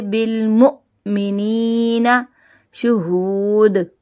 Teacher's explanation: یہاں پہ حمزہ ساکنہ کو جھٹکا دے کے پڑھیں گے